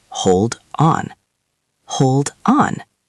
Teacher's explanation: Hold ends with a D. On starts with an O. So the D moves over.